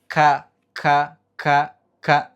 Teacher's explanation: Sedikit ke depan, dia ada ka. Lidah pangkalnya, pangkal lidahnya nempel dengan langit-langit yang mulai agak keras.